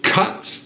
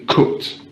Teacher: and southern accents from northern english accents is the ah sound in rp you have ah whereas in the north of england it's just uh